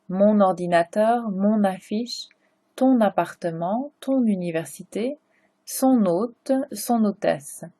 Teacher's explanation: mon ends with the consonant, ordinateur starts with a vowel. So you're going to make the liaison.